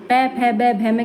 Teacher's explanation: ओष्ठय यानी कि जो होठों से बोलते वक्त आपस में हमारे होठ मिलते हैं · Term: ओष्ठय वर्ण